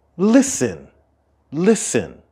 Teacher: the stress of the word listen is at the beginning